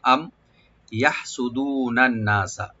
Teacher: আম ইয়াহসুদুনান নাসা, আম এখানে হামজাকে right দিবেন, আর মিম সাকিন এখানে আমরা অবশ্যই এখানে জাহার করব, আমরা এখানে গুণনা হবে না, গুণনা করব না